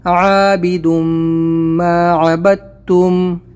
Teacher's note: ولا انا عابد ما عبدتم، عین نکالیں گے، یہاں پر غنہ کریں گے اور با کو تا سے ملائیں گے کیونکہ تشدید سے پہلے اگر جزم آتا ہے تو وہ ختم ہو جاتا ہے. با کو ڈائریکٹلی تا سے ملائیں گے